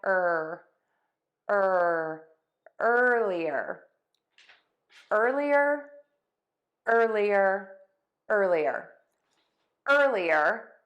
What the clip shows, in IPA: ˈɜrliər